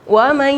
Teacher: Yang idgham bi gunnah itu lama menahannya kurang lebih 2 harokat, sama kayak ini mat tabi'i ya.